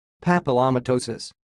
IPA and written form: ˌpæpɪləməˈtoʊsɪs (papillomatosis)